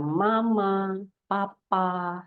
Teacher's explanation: Ya, biasanya kata-kata ini yang kalau di Indonesia ini 2 suku kata ya, dan biasanya juga vokal yang pertama muncul adalah A, lalu konsonan yang pertama muncul adalah yang bilabial, ya, yang diproduksi dengan menggunakan bibir